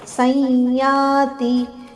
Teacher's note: ಇಲ್ಲಿ ಸಂಯಾತಿ ಅನುನಾಸಿಕ ಯದ ಉಚ್ಚಾರಣೆ